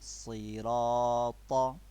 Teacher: As we explained, when we see fatha over ra, that time we will make a thick tone. So we have to make a thick tone here.